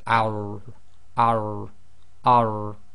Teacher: You say, so that's thicker. You got to lift up the back of the tongue to do the tap. Now in English here we've put arrow but you've got to add the thickness to it as in the heaviness to it.